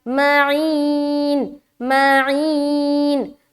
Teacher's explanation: ماں کو جلدی ای میں کھینچ رہے ہیں، آواز نیچے کی طرف جائے گی کیونکہ یا مدہ ہو رہا ہے، یا مدہ زیر کے ساتھ ہوتی ہے نا، تو زیر کی آواز always going down، ٹھیک ہے۔